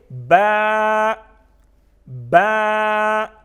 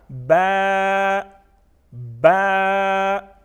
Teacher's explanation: बा की आवाज़ में थोड़ी सी जुम्बिश इसलिए पैदा करते हैं क्योंकि ये हुरूफ क़लक़ला में से हैं